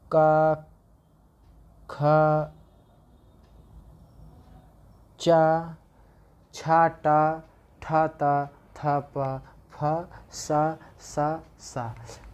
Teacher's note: जिन वर्णों के उच्चारण में नाद की जगह केवल सांस का उपयोग होता है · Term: अघोष वर्ण